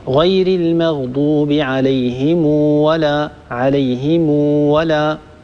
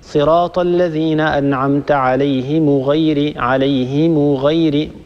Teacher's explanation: صلة ميم الجمع يعني أن نصل هذه الميم بواو لفظية، ليس فقط نضم هذه الميم